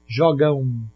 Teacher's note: Olha como você está falando um U no lugar desse M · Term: ditongo nasal